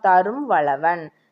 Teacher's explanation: நம்ம மாத்திரை அளவில் பார்த்தோம், மகர குறுக்கம் ஆயுத குறுக்கம் ரெண்டுமே 1/4 மாத்திரை. அப்போ தன்னுடைய அரை மாத்திரை அளவிலிருந்து 1/4 மாத்திரை அளவாக ஒலிப்பது தான் மகர குறுக்கம்